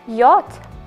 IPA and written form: jɒt (Yacht)